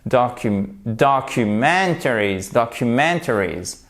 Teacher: un accent tonique secondaire pour soutenir le mot au début